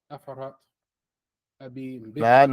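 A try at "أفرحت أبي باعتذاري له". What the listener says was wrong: No. The ha, we had the ha as a sukoon.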